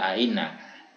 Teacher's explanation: hamzah musahilah yang ditasil atau diringankan karena dia dibaca antara hamzah dan ya, seperti ainnaka iya tidak iya tidak ainnaka ya tidak ainnaka ya ainnaka ini dibaca antara hamzah dengan ya.